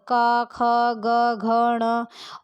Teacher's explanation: कंठ से उच्चारित होने वाले होते हैं का वर्ग